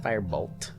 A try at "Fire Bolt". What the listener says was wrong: It's not the T. It's the A versus O that you fuck up. You always say fire bolt. Bolt. Bolt.